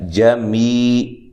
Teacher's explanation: یہ بھی یا مدہ ہے، جمی، لمبا کر کے پڑھیں گے ایک الف کی مقدار کے برابر